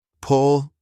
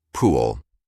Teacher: Pull with a short U like in put, pool with the long OO.